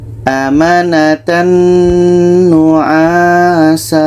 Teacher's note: Jadi di sini ada tanwin bertemu nun, maka ini idgham bi gunnah. Bunyi tanwin masuk ke nun.